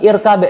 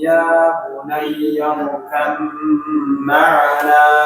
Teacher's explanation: Jadi kita gak baca qalqalah baknya tapi langsung ke mim.